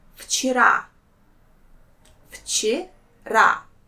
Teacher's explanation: the sound V will pronounce as its voiceless counterpart sound F. So it becomes вчера.